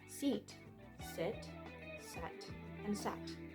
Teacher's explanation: each vowel is pronounced with the tongue positioned towards the front of the mouth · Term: front vowels